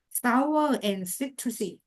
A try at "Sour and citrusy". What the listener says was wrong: Yes, you said it correct this time. Very good.